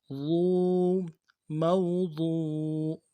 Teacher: واو زبر مو، ضاد واو پہ ضو، ضاد واو پہ ضو، واو مدہ ہے، کھینچیں گے ایک الف مدار میں ، ضو، موضوع، ضاد کو موٹا بھی کریں گے، عین زبر